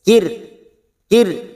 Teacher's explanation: ada ro sukun yang didahului kasr kita baca tarik tipis